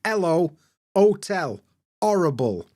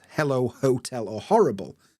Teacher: we kind of drop the H at the beginning of words like hello otel horrible I don't Pronounce hello hotel or horrible